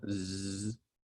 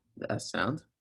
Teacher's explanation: if you say the z sound z you feel the vocal chords moving but if you make the s sound the s sound the vocal chords are not being used · if you say the z sound, z, you feel the vocal cords moving